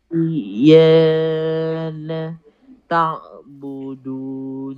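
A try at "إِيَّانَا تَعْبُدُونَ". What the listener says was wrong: Iyana na pun sama panjang eh.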